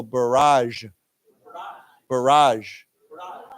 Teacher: this accent is on the second syllable